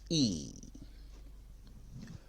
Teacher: your tongue is high and at the front of your mouth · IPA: /i:/